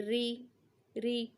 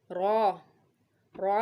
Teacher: جب را پر زیر لگ جاتا ہے اس کے نیچے تو وہ باریک پڑھا جاتا ہے